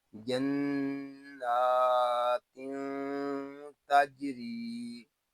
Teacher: نون مشدد میں غنہ ہوگا، نون کو ایک الف تک کھینچ کر بھی پڑھیں گے کیونکہ نون کے اوپر کھڑا زبر ہے۔